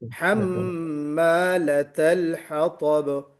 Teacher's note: لطل نہیں ہونا چاہیے، طا نہیں ہے، تا ہے